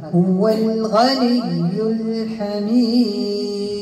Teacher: والدال بطبيعه الحال نوقف بقلقله · تعريف جاءت بعد الحاء، عندي إظهار قمري، أعطيت توسط لهذيك اللام، والدال منين وقف طبيعة الحال نوقف بقلقلة